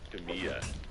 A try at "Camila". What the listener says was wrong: You pronounce the L, guys. One L.